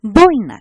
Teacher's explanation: la vocal abierta más la vocal cerrada y constituyen una sola sílaba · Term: diptongo